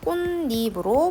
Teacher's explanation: 자, 그 다음에 얘도 비음화가 될 수 있는 조건이죠. 앞말이 디귿이고 뒷말이 비음인 니은이기 때문에 디귿을 니은으로 비음화를 할 수가 있습니다. 그래서 꽃잎으로 발음할 수가 있겠죠.